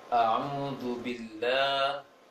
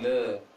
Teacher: pengucapan huruf-huruf berharokat fathah yang tipis, maka ke A, jangan ke E diarahkan. Membuka seakan-akan baca A bukan E.